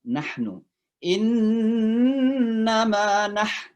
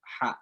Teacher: Tenggorokan tengah. Ya, jadi kayak menyentuh tenggorokan tengah.